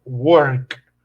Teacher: ¿Cuál es el último sonido de work? Pues el sonido de letra K, que es, yo me toco la garganta y no vibra.